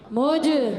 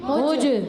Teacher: جیم ساکن ہے یہاں پر, ساکن ہے تو آواز لوٹ کر آئے گی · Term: کلکلا